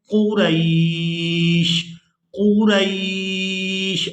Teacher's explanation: وقف کریں گے تو وقف کی صورت میں ہم نے شین کو ساکن کر دینا ہے